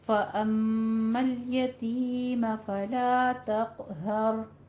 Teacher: فلا تق قوف ہے یہاں پہ پر پڑھتے ہوئے قلقلہ کرنا ہے, ہر میں را کو پر پڑھنا ہے